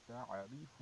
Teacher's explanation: عین نرمی سے ادا ہونی چاہیے، یہ حمزہ نہیں، یہ حمزہ سختی سے ادا ہوتا ہے. حمزہ ہوتا تو ہم اس طرح ادا کرتے.